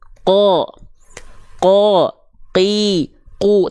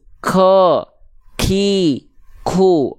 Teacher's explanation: ada keluar percikan-percikan nafas ketika melafalkan huruf qaf · huruf qaf ini itu sifatnya jahar, tidak mengalirkan nafas.